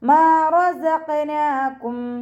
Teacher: മീമിൻ്റെ കൂടെ അലിഫ് മദ് വന്നു, 2 കൗണ്ട് നീട്ടിക്കൊടുക്കുക